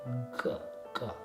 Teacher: It's also the first soft consonant that we make in the back of our throat.